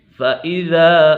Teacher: إِنَّ مَعَ الْعُسْرِ يُسْرًا فَإِذَا فَرَغْتَ فَانصَبْ، فَإِذَا الف مدہ ہے، الف مدہ کو ایک الف یعنی 2 حرکات کے برابر کھینچ کر پڑھیں گے